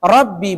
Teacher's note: ba bertasdid sifatnya jahar dan syiddah makhrajnya di kedua bibir